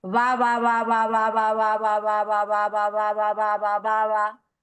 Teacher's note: la segunda por ir en posición intervocálica, la pronunciaríamos como fricativa